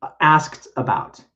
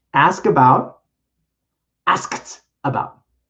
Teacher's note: ask about and the past tense is asked not asked no with the ed it actually is a t sound because the verb ends in a k